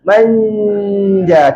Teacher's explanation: Masa kita sebut man tu, tengah lidah kita hampir nak kena langit-langit atas. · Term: dengung huruf jim